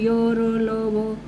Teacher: सांस का जो अवरोध है वो बहुत कम होता है, यानी स्पीडली ये बोले जाते हैं और जीभ किसी भी भाग को टच नहीं करती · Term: अंतस्थ व्यंजन